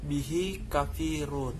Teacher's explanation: Mat silah kasiroh yaitu memanjangkan suara bacaan pada hadamir, bunyi hi atau hu, kata ganti orang ketiga tunggal yang tidak diikuti hamzah sesudahnya. Cara membacanya adalah memanjangkan bacaan selama 2 harokat. Contohnya, bihi kafirun.